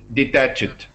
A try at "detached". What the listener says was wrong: I can hear now that he's saying the right word, but it's not the right stress pattern. Detached. Detached.